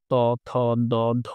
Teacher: ত, থ, দ, ধ তুমি দেখো যেগুলো দাঁতের স্পর্শ লাগছে, এগুলোর জন্য দন্তধ্বনি